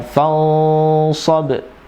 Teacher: Itu adalah ikhfa ya, dan di situ ada huruf shad huruf istilah, maka ikhfa-nya ada kekhususan di situ. Tebal ya, fansab, dan termasuk ikhfa ya awsat.